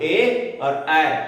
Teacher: ए और ऐ ये कंठ और तालु दोनों से, इसीलिए इसका नाम कंठ तालव्य है, इसका नाम है कंठ तालव्य।